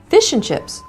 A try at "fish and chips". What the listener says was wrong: Why do you put the accent on the fish? No, it's not. Fish and chips. Fish and chips.